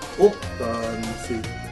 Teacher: accent is on the op, but the A is long